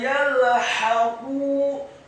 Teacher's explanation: Kata yalhaqu, huruf ya-nya dibaca tipis, fathah 1 harokat, huruf lamnya dibaca sukun, huruf ha-nya dibaca tipis, nyaring dan halus, fathah 1 harokat. Kemudian huruf qaf-nya dibaca tafkhim, tebal, dhammah 2 harokat karena setelahnya ada wawu sukun.